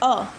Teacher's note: ना ही आगे हलचल होता है ना ही पीछे। सीधे बीच से इसका आवाज आता है। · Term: मध्य स्वर